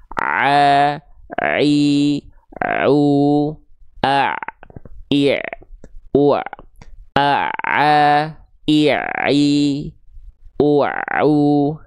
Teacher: maka ain dilafalkan tepat dari bagian tengah tenggorokan kita. Dirasakan. Ya, kalau perlu sampai meremlek deh. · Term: huruf ain